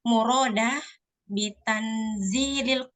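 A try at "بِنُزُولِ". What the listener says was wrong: binuzul bukan tanzil, binuzul.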